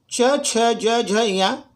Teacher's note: जो तालु है अपना तालव्य उसे कहते हैं, वो जो तालु से होता है, क्योंकि उच्चारण करते समय जीभ तालु महसूस करेगी, उच्चारण का प्रयास करें। जीभ जो है तालु को टच करते रहेगी